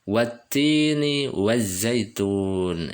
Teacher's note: Wat ditekan karena taknya bertasdid ya